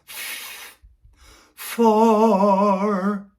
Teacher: F doesn't have pitch, and it's what's called a sustained unpitched consonant.